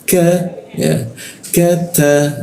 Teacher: huruf ka di siku tenggorokan, lidahnya diturunkan sehingga rongga udara terbuka dan ada hembusan udaranya.